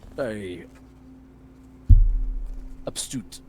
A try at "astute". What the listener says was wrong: Astute. There's no B.